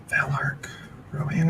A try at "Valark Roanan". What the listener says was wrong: Rowan with an EN on the end.